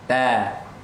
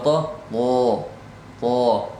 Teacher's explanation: ta itu tidak terangkat th itu terangkat pangkal lidah